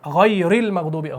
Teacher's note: غیر کے را کو آگے لام سے ملاتے ہیں